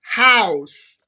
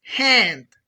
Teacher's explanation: Finally, I will explain the sound ha ha. This sound is voiceless. It means it doesn't have vibration in the vocal cords. We produce it by pushing air from the throat without blocking it.